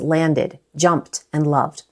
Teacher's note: All three end in ed, but that ending is pronounced three different ways: /ɪd/, /t/, and /d/.